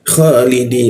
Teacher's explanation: Kha menggunakan posisinya di atas jakun ya. Kha ada ngoroknya dia.